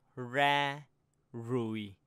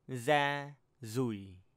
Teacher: Some dialects say the R as Z instead of R.